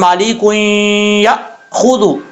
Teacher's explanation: یہاں پر یا کے بعد جو ہے وہ حمزہ ہے، حمزہ سختی سے پڑھا جاتا ہے